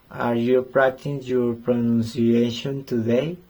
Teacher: my voice rises at the end because it is yes or no question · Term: intonation